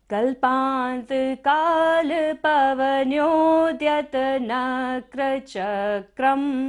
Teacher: क के ऊपर बिंदु है और यहाँ पर क्या हमारी थर्ड लाइन फिनिश हो रही है, तो हमें यहाँ पर हमेशा बिंदु का उच्चारण म करना है